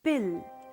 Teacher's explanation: the voiceless plosive p is followed by a stressed vowel and is in the syllable initial position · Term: aspirated allophone